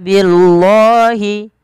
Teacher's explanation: Apabila ada lafal Allah didahului dengan huruf kasrah maka lamnya dibaca tipis